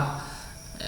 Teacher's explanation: dengung ini kita ucapkan ya kita bunyikan dua harokat atau dua gerakan jari